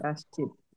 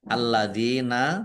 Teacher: dzal kasrah ya sukun mad thobi'i panjang dua harakat